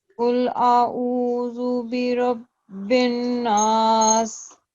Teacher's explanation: रॉ को thick करना है, जरा मोटा पढ़े, इसको भर के पढ़े।